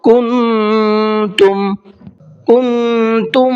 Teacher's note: اس نون کی آواز کو تھوڑا سا ناک میں چھپا کر کے پڑھیں گے۔ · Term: اخفا